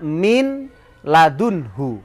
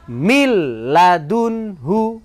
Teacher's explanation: huruf Idgham bilagunnah ada berapa Ada dua yaitu lam dan ro maka cara membacanya masuk tanpa dengung atau dinamakan bacaan idgham bilagunnah